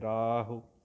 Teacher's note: ਹੁਕਮ ਵਿੱਚ ਮੰਮੇ ਦਾ ਔਂਕੜ ਖਿਆਲ ਨਾਲ ਪੜ੍ਹਿਓ। ਰਾਹੁ ਵਿੱਚ ਰਾਰੇ ਕੰਨਾ ਰਾ ਲੰਬਾ ਕਰਕੇ ਹਾਹੇ ਔਂਕੜ ਸੰਕੋਚ ਕੇ